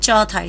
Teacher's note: કંઠ્ય અઘોષ અલ્પપ્રાણ ક હોય તો એના બદલે તાલવ્ય અઘોષ અલ્પપ્રાણ બોલાય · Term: કંઠ્યનું તાલવ્યકરણ